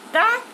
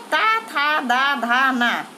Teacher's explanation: टा मूर्धन्य है, ये दंत नहीं है, दंत वर्ण होते हैं, ता, था, दा, धा, ना।